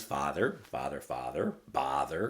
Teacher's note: the ah sound is dry and it's spread